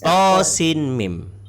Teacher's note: Jadi nun bertemu dengan mim maka ada hukum idgham ma'al hunnah. Jadi kita dengung.